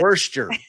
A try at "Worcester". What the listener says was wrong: No. Close. Get rid of the R.